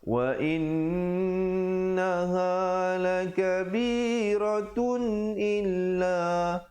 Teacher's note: Bunyi pertamanya wa in itu didengungkan dua harakat wajibul ghunnah.